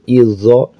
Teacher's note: Kunna izo, huruf zo. Zo itu makhrajnya sama dengan za, agak tebal sedikit.